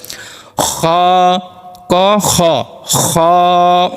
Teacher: খ গলার মধ্যে একটু খতখত করে একটু জিনিসটা লাগতে হবে একটু ভাইব্রেশনের মত হবে